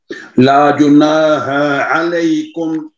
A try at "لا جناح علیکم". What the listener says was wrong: ہاں کو لمبا نہیں کرنا. لا جناح علیکم. نہیں دیکھیں آپ پتہ کیسے پڑھ رہے ہیں, لا جناح علیکم. نہیں ہا ہا اس کو لمبا نہیں کرنا. لا جناح علیکم. لا جناح علیکم. لا جناح. علیکم.